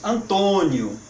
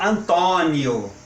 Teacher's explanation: Nós falamos Antônio, tem que ser acentuado, tem que ter um acento circunflexo. Eles falam, lá do outro lado do oceano, nossos irmãos lusitanos, falam Antônio, bem aberto.